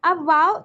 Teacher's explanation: हमारे लिप्स गोल हो जाते हैं, जैसे हम इंग्लिश में वाओ बोलते हैं इसी तरीके से, बस लेकिन लिप्स में ज्यादा गैप नहीं होना चाहिए, बस एक पेंसिल जितना गैप होना चाहिए